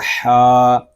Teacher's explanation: ہا حلق کے درمیان والے حصے سے ادا ہوگا اور اس کو ہم ایک الف تک کھینچ کر پڑھیں گے · اس کو ہم ایک الف تک کھینچ کر پڑھیں گے کیونکہ ہا کے اوپر کھڑا زبر ہے اور کھڑا زبر یہ الف مدہ کے قائم مقام ہے، اس